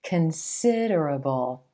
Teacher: Do you hear that emphasis on the second syllable and the I as in silver vowel sound?